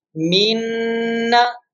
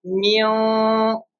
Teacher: In Noon Mushaddad, our tongue will touch with the palate